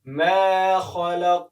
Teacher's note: ما خلق خا همیشه ډک ادا کېږي